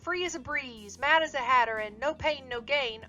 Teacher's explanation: Assonance is similar to alliteration, but instead of relying on consonants, assonance gets its rhythm from repeating the same vowel sounds with different consonants on the stressed syllables